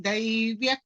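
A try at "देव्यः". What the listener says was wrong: Devyah krodha Devyah. Daivya would have been like Daivatvam kind of Daiv. Devya krodha.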